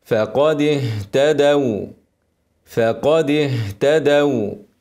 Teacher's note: ونبينها ونوضح الهمس ارقق الفاء قبل القاف فاقاء فاقاء واكسر الدال الهاء ساكنه وحرف خفي ابينها بعدها ايه حرف شديد التاء وفي همس اوعى ايه التاء تاكلها · الواو اسكنها كده وارققها وماطولهاش زياده عن لزوم لكن لازم تظهر